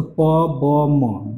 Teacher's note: So two lips means the upper lips and the lower lips. Two lips are articulated. · These three sounds are called bilabial sound. Bilabial because here only the two lips are the articulated. मतलब यहाँ पे to lips upper lips और lower lips दोनों लिप्स को टकराने से ये three sound pronunciation होता है इसलिए इस साउंड को कहता है बाइलेबियल साउंड ठीक है Now number two is labiodental. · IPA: /p, b, m/